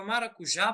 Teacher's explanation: a palavra maracujá possui a sílaba tônica já e a sílaba átona ma, né? Essas duas sílabas consegue ser analisada tendo acento e não tendo acento.